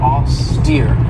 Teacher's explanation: this has two syllables and the stress is on that second syllable with that long e sound